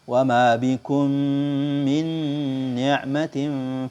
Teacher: memasukkan huruf mim sukun pada huruf mim yang berharokat sehingga keduanya menjadi satu huruf yang bertasydid yang disertai dengan suara gunnah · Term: idgham mimi